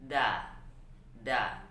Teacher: membaca d huruf Indonesia sehingga ujung lidah diletakkan di langit-langit da da padahal yang Betulnya adalah huruf Dal itu sama letaknya